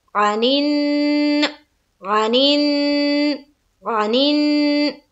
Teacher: हाँ, आइन जबर आ, जल्द अदा करना है, और फिर नून को नून से मिलाते हुए यहाँ पर क्या करेंगे? गुन्ना।